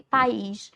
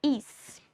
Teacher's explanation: a minha sílaba tônica, ou seja, aquela sílaba mais forte, é o IS aqui, ó. Is.